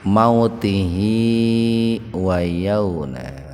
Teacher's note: Jadi kalau diwasol, kalau disambung, hi-nya dibaca panjang. Idealnya sih disambung gitu.